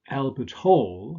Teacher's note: Albert Hall stress on the second element why because this is a place name and we said that